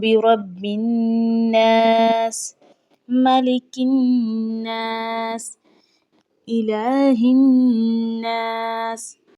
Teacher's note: اب یہاں پر تینوں آیات میں برب الناس اور آگے ملک الناس اور آگے الہ الناس، یہاں تینوں پر جو ہے ہم نے گنہ کیا ہے اور نون کو سختی سے پڑھا گیا ہے، اس لیے کہ اس پر علامت تشدید آ چکی ہے۔